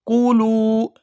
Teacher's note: یہاں لام کو واو ساکن کے ساتھ ملائیں گے تو کھینچ کر ادا کریں گے